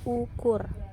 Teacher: dilafalkan sebagai bunyi U tinggi bawah belakang bundar apabila berada pada silabel tertutup seperti pada kata ukur.